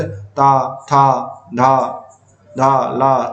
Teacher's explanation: जिनका उच्चारण ऊपर के दांतों पर जीभ लगने से होता है।